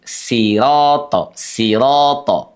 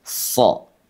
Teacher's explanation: Huruf shad dibaca dengan suara menebal.